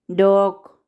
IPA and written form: dɒɡ (dog)